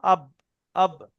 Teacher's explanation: দুই ঠোঁটের শুকনো অংশ না ভিজে অংশ, কি পড়লাম যেন, আব, আব, দুই ঠোঁটের শুকনো অংশ, বাহ। তাহলে বার মাখরাজ দুই ঠোঁটের শুকনো অংশ।